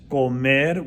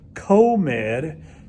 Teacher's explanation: the vowels are shorter in spanish called med we don't want to say like comed just like